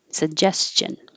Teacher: it has the j with voicing, jess, and then the ch without voicing